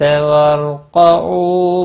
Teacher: کاف کے اوپر کھڑی زبر ہے، ایک الف کے برابر کھینچ کر پڑھیں گے، باقی کسی بھی حرکت والے حرف کو کھینچنا نہیں ہے۔ را ساکن سے پہلے زبر ہے، را پور پڑھا جائے گا، اس کو ہلانا نہیں۔ او واو مدہ ہے، ایک الف کے برابر کھینچ کر پڑھیں گے۔